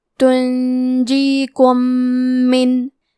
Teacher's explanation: ادغام کا معنی ہے حرف کو حرف میں داخل کرنا، تو ہم میم ساکن کو دوسرے میم میں ملا کے ایک ہی میم غنہ اور تشدید کے ساتھ پڑھیں گے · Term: ادغام متماثلین صغیر